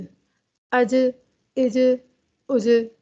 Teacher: यहाँ पर हम कलकला की सिफ्त को अदा कर रहे हैं। जीम के अंदर सिफ्त एक कलकला पाई जाती है जब भी जीम साकिन हालत में होता है।